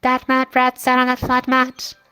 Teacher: Fully intonated, high pitch, higher bright resonance, small vocal tract size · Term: fem voice